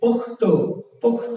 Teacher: খ থেকে ক হয়েছে, এটি মহাপ্রাণ থেকে অল্প প্রাণ হয়েছে